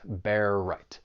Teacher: And for pronunciation, the only thing I want to say about, well, just one of the phrases, bear right, you have that overlapping R sound, that final R in bear and the beginning R in right, just allows you to move from one word right into the next